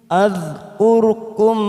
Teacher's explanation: kita tahan huruf dal sukun bukan qalqalah